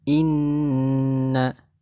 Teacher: Yang pertama inna hukum bacaannya ghunah karena ada nun yang bertasydid.